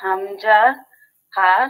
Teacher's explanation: কণ্ঠনালী শুরু হইতে উচ্চারিত হয় হামজা হা শক্ত করে